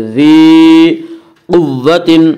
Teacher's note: قاف کو پر پڑھیں گے، قاف حروف مستعلیہ میں سے ہے